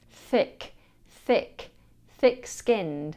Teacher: The TH here should see the tongue placed between the teeth. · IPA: /θɪk/